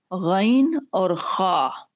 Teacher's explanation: गैन और खा का जो मखरज है ये हम पहले भी जिक्र कर चुके हैं, यानी हलक के ऊपर वाले हिस्से से अदा होगा, जिसे अदनाए हलक कहा जाता है